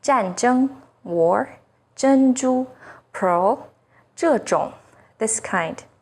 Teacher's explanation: ZH sounds like the first sound in jerky, with the tip of the tongue raised against the hard palate. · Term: double initial ZH